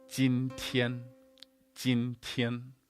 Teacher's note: You've also got the heavier aspirated T in tian. You've also got the N sound, not an, it's not 今天.